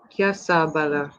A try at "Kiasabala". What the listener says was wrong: Well done, Kiasabala.